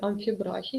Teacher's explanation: у слові амфібрахій наголос всередині слова